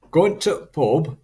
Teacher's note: the characteristic stopping of the definite article